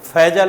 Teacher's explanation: नीचे का होठ ऊपर के दांत को टच करेगा